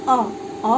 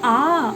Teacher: अ बोलने में हमको एक मात्रा का समय लगता है, लेकिन आ बोलने में हमको 2 मात्रा का समय लगता है, यानी जिन वर्णों के उच्चारण में हमको 2 मात्रा का समय लगे वो सब के सब दीर्घ कहलाते हैं।